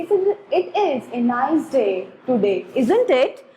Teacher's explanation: जो हमारी टोन होती है लास्ट वाले वर्ड्स को बोलने में वो पिच हाई हो जाती है